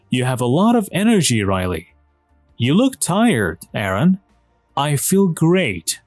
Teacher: there is usually falling intonation and a pause before the name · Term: intonation with direct address